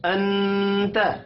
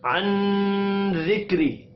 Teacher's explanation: اخفاء حقیقی جب بھی نون ساکن اور تنوین کے بعد ان 15 میں سے کوئی بھی حرف آ جائے تو وہاں پر اخفاء حقیقی ہوگا، یعنی آواز کو ناک میں چھپایا جائے گا